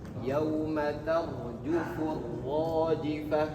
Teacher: Ro-nya ro tafkhim artinya adalah tebal